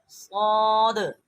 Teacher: صاد بھی سیٹی سے، اس کو ہوا کو منہ سے بھرنا ہے کیونکہ یہ حروف موٹا ہے